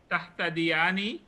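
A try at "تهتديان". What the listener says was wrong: Nice.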